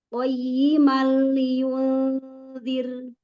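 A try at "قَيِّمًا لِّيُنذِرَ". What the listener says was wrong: Catatannya tetap Ibu kurang membuka rongga mulut. Jadi ngajinya masih jaim ya. Masih jaim. Tadi bawah. Ini makanya kalau Ibu perhatikan betul-betul saat saya ucapan kasroh itu bibir bawah itu kayak ngasih ruang supaya giginya kelihatan. Padahal dengan demikian maka sudah pasti rahangnya turun. Karena kasroh itu menurunkan rahang dan bibir bawah.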